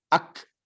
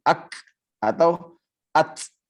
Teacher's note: Karena kalau ta dan kaf dia tidak bisa dikolkolahkan. Syiddah namun dia bocor anginnya.